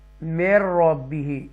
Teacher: یہ میم مشدہ یہ را مشدہ کے ساتھ جا کے ملے گا, اور کلیئر پڑھیں گے آواز کو میر ربی. یہ بھی ادغام ہے, یہ بھی ادغام ہے, حروف ینملون میں سے میم اور را.